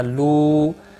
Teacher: لو مد منفصل ہے، تین الف کے برابر کھینچ کر پڑھیں گے